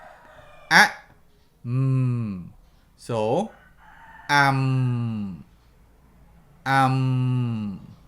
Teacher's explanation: you should feel vibration at the back of your nose.